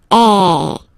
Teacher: the sound is really open, and normally your mouth should be opened a little bit more than with the accent aigu as well. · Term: accent grave